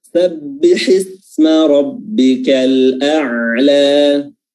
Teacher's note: huruf ain letaknya adalah pertengahan tenggorokan